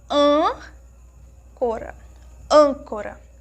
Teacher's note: quando nós pronunciamos a sílaba an, nós percebemos que é um timbre mais fechado, é um som assim mais para dentro.